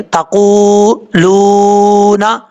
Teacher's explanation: قاف کے بعد بھی واو مدہ ہے، لام کے بعد بھی واو مدہ ہے، دونوں کو ایک ایک الف برابر لمبا کر کے پڑھیں گے